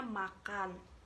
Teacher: konsonan nasal bilabial yaitu M